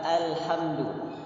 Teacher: jangan ditebalkan dengan a, tidak boleh. Harus sambil tersenyum. Huruf tipis ya.